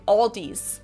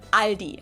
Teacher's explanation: they also sometimes add an S that isn't there in the end